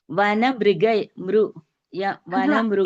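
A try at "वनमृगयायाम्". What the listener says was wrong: It is not Mru. It is not Mru. It is Mr. See, there is a difference when you say Mru.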